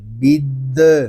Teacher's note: دال مشدد ہے اس کو جماؤ کے ساتھ ادا کریں گے